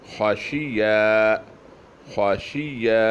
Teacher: خا موٹی، شین بھی پتلی، یا بھی موٹی